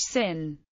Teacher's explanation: The voiceless alviola sibilent s has a strong hissing sound as the s in English sin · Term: voiceless alveolar sibilant